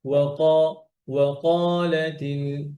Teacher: কফ যেহেতু মোটা হরফ, এই জন্য এই ওয়াওটাও একটু মোটা মোটা হয়ে যায়।